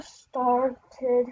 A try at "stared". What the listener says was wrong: Stared. No, not start. Stared.